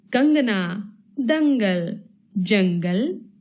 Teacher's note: अनुस्वार, इनका उच्चारण नाक से होता है।